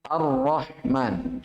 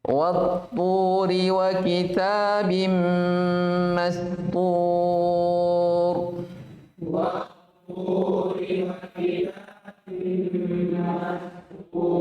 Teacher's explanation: Seakan-akan alif dan lamnya, maksudnya alnya tidak dibaca. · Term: idgham syamsi